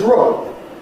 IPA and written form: roʊd (road)